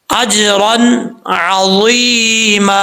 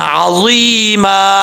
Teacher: वक्फ करते हुए एक ज़बर को अलिफ से बदल देंगे